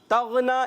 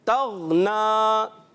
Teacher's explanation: یہاں پیارے بچوں خیال رکھنا ہے کہ غین میں کلکلہ نہ ہو.